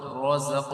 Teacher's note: را یہاں پہ پر پڑا جائے گا کیونکہ را کے اوپر زبر ہے